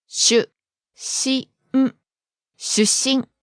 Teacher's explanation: There's a small stop sound in the middle.